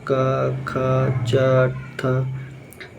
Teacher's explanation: ऐसी ध्वनियां उच्चारण में स्वर तंत्र में कंपन नहीं होती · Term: अघोष